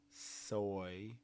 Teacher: Look and feel where your tongue is when you say an S. Tongue is up kind of close to where you make an E. Soy. So, it has to like fall from an E placement.